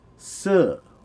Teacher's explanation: The Thai word for to buy, as in to purchase, is se with a high tone.